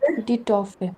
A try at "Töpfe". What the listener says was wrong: Die Töpfe. Oh, Umlaut. Ja, die Töpfe.